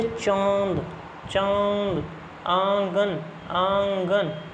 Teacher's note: आवाज जो है वो नाक से तो निकलेगी भी लेकिन मुंह से भी निकलेगी मुंह से निकलेगी नाक से भी दोनों से निकलेगी उसको बोलते हैं अनुनासिकता। · देखो नाक से भी निकल रही है मुंह से भी निकल रही है।